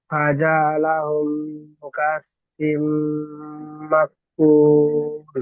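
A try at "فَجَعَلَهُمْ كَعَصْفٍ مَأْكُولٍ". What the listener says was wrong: হুম, মাটা একটু হামজাটা ঝাটকা দেন। মা কুল।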